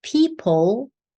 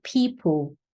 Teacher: in Brazilian Portuguese, you're going to pronounce something closer to an U vowel, or maybe a W consonant, something like W or U, something like that.